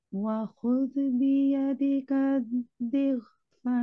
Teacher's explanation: Okay, here I felt, mashallah, overall you recited well, but here I felt like you are pronouncing this zal with a jerking sound